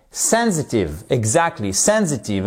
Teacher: sensitive avec une accentuation sur la première syllabe